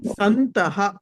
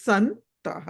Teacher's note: తవర్గంలోని పంచమాక్షరం న కాబట్టి అనుస్వార స్థానంలో నకారం వచ్చింది